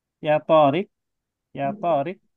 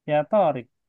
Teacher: Kalau bertanya itu dia ada apa ya? Intonasinya itu naik di ujung.